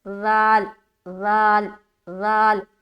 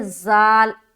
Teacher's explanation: ذال کو ادا کرتے وقت ہماری زبان کی جو نوک ہے وہ ہلکی سی باہر ہوتی ہے، اور پھر اوپن کرتے ہوئے زبان اوپر کے ثنایا علیہ میں ٹچ ہوگا، جو اوپر کے جو دانت ہے نا دو سامنے کے، اس میں، جیسے کہ وَإِذْ ذال ذال ذال۔